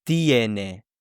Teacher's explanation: because there is stress on the E, it will split into IE. So it's not tene, but it's tiene.